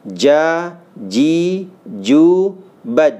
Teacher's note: tengah-tengah lidah ya itu menyentuh daripada langit-langitnya · ketika ja sukun itu qalqalah